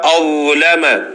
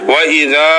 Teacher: ذال اور ذا کا مخرج ایک ہے، اوپر والے دانت ان کی نوکیں اور زبان کی نوک لگائیں، لیکن اس میں فرق یہ ہے کہ ذا موٹا ہی پڑا جاتا ہے، ذال باریک پڑی جاتی ہے